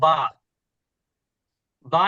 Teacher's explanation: বা এর মাখরাজ বলা হচ্ছে দুই ঠোটের ভেতরের অংশ যুক্ত করে